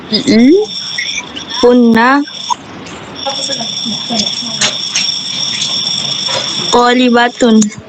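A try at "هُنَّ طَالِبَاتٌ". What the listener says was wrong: agak dipanjangkan dikit ya.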